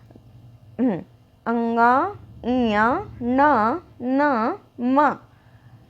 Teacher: जैसे लग रहा है कि नाक से भी आवाज आ रही हो और मुंह से भी प्रेशर पड़ रहा है। अंग, इया, ना, न, म, इनको जो है, इन 5 अक्षरों को पंचम अक्षर भी बोलते हैं।